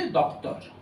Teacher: ওই ও এরকম দুপাশে ব্যঞ্জন ধ্বনি থাকলে ও একটু নেমে আসে। এইরকম যে বদল সেগুলোকে বলা হয় সহধ্বনি।